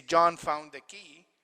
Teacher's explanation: If you say John found the key, usually when you say it regularly in normal conditions, you stress John, you stress found, and you stress key.